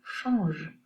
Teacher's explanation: since in French we have change, we don't have an affricate at the beginning. We have a sh instead of a ch. And at the end we have a je instead of a j.